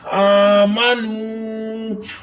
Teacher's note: میم کے اوپر زبر ہے ما بغیر کھینچے پڑھیں گے. نون پر واو مدہ ہو رہا ہے, واو ساکن اس سے پہلے پیش, ایک الف کی مقدار کھینچ کر پڑھیں گے